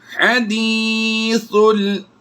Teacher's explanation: सा को लाम के साथ मिलाकर हम आवाज़ देंगे, ये अलिफ साइलेंट होगा